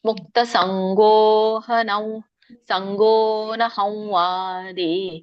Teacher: ಮುಕ್ತ ಸಂಗೋನ ಹಂವಾದಿ, ನೋಡಿ ಯಾಕಂದ್ರೆ ವ ಇದೆ. ವ ಇದ್ದಾಗ ಅಲ್ಲಿ ಸಾನುನಾಸಿಕ ವನೇ ಬರುತ್ತೆ.